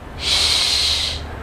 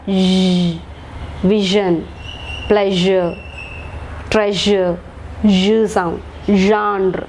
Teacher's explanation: So we have sh and its voiced one, zh.